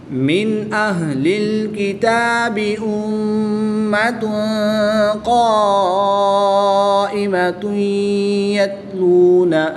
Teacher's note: پیش کی تنوین کے بعد یا حروف یرملون میں سے ہے تو یہاں پر ادغام مع الغنہ ہوگا، غنہ کر کے پڑھیں گے